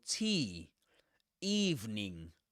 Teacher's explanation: That's the fleece vowel sound. The long E